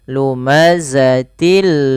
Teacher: Sama pada lafal lumazatillu ada tanwin yaitu berupa kasratain bertemu dengan lam. Maka cara membaca masukkan tanwinnya kepada huruf lam. Lumazatil. Bukan lagi lumazatin lumazah. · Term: idgham bila ghunah